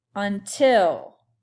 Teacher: the stress is on the last syllable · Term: syllable stress